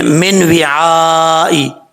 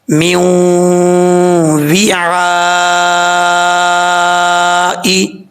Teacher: تو ٹھیک پڑھنے کے لیے آپ نے اس چیز کا خاص خیال رکھنا ہے یہاں پر، کیونکہ ادغام یرملون ہو رہا ہے، نون ساکن کے بعد واو آ رہا ہے جو کہ حروف یرملون میں سے ہے، اور یہاں پہ غنہ ہوگا، 1 الف کی مقدار غنہ کیا جائے گا۔